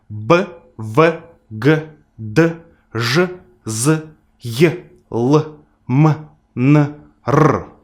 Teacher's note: all these sounds were pronounced using the vocal folds, and that's why they belong to the group of voiced consonants